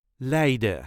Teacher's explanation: as with many Dutch words pronunciation of the last letter the N is not needed